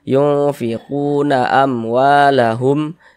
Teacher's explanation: mim sukun yang tidak bertemu dengan huruf ba, tidak bertemu dengan huruf mim, maka hukumnya adalah izhar syafawi dan dibaca tidak berdengung, dibaca jelas tak berdengung. · maka hukumnya adalah izhar syafawi dan dibaca tidak berdengung, dibaca jelas tak berdengung. Nah, ini huruf mim sukun bertemu dengan huruf waw.